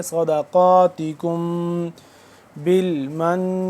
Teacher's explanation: صاد زبر صاد، دال زبر دا، صدقاتکم، کاف میم پیش کم، میم ساکن ہے اور اس کے بعد با ہے تو اس پہ ہم اخفا کریں گے